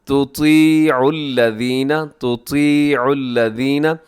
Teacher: زیر ہو زبر ہو پیش ہو ہر صورت میں طا موٹا ہی پڑھا جائے گا